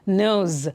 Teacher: ನೋಸ್ ಅಲ್ಲ, ನೋಸ್. ಅಲ್ಲಿ ಇದ್ರೂ ಸಹ ಸ ಸೌಂಡ್ಗಿಂತ ಝಿ ಸೌಂಡ್ ಬರಬೇಕಲ್ಲಿ